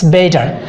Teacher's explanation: দুটি ভাওয়েলের মধ্যবর্তী স্থানে যদি টি থাকে, সেক্ষেত্রে আমরা উচ্চারণ করব কি, ওই টিটাকে আমরা ডি হিসেবে উচ্চারণ করব। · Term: ডি সাউন্ড